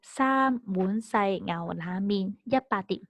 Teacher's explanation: for the first 6 notes, it should be longer, but the last 3 notes, it is actually repeating 3, 4, 2, but shorter.